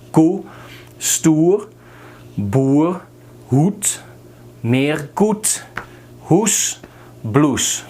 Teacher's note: not like the English oo, but oe, short.